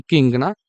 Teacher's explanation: இக்கு, இங்குனா நாவின் முதல் அன்னத்தின் அடியில வந்து வரும்